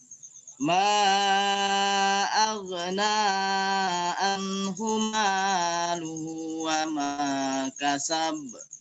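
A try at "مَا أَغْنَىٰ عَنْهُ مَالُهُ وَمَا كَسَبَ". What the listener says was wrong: Dan nanti ainnya dikuatkan an.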